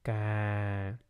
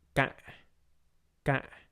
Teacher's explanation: You can notice that the word with low falling broken tone is a stop sound, so we can't prolong the word with low falling broken tone.